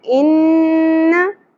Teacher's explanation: नून मुशद्दद पे गुन्ना होगा, आवाज़ को नाक में ठहराना है।